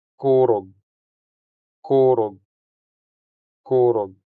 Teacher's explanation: The stress falls on the first syllable making the first o sound longer than the second o sound.